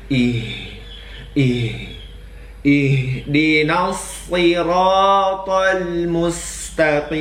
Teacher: huruf q haruslah berada di Pangkal lidah ya jangan terdengar seperti Huruf Kaf